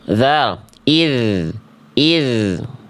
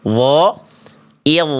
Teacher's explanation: ini zal ya, pangkal lidahnya turun, dho pangkal lidahnya naik